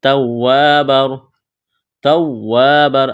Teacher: الف مدہ ہے، تنوین کے بعد را ہے، ادغام کریں گے بغیر غنے کے